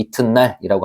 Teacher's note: 디귿이 뒤에 오는 니은을 만나서 니은으로 바뀌는 현상 이런 거를 비음화라고 합니다